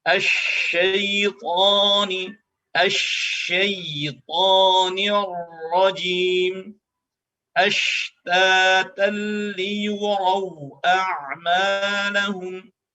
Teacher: huruf yang keluar dari tengah lidah kita, dari wasatul lisan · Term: huruf shin